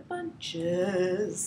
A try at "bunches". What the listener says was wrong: Oh, that's a way worse vowel.